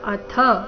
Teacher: ಅಥ ಥ ಮಹಾಪ್ರಾಣ ರಸ್ವ